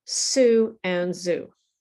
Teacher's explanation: So actually, sue and zoo are actually sister sounds. It's the same muscle movement, the same movement in your face, but there's one small difference, which is the vibration.